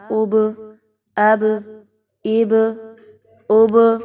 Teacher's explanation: قلقلہ کیا ہے کہ آپ نے اس کو ساکن کرتے ہوئے با کو آپ نے ہلا کر پڑھنا ہے، ٹھیک ہے؟ یعنی کہ آپ نے اس کو جزم لگاتے ہوئے ہلا کر پڑھنا ہے۔